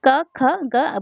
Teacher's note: इनके उच्चारण में जीव का पश्च भाग कोमल तालू को स्पर्श करती है तो इसमें क वर्ग आएगा क वर्ग कंठ से क वर्ग · क ख ग बोल के देखिएगा तो आपको पता चलेगा कि जीव के मूल भाग से इसकी उत्पत्ति हो रही है